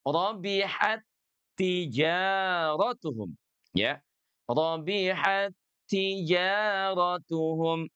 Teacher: jelas kalau dua huruf yang sama ini mah leburnya pasti lebur sempurna ya